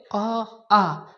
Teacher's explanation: तो अ आ का उच्चारण कहाँ से होगा? कंठ से होगा।